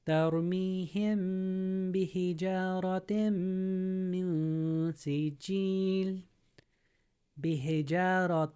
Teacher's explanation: it turns it into a M as in Mary instead of an N as in Nancy